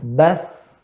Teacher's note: Udara keluar. Pita suara terbuka. Tidak bergetar. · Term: huruf hamsun